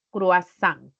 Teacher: recae en la última sílaba, se tila por ser aguda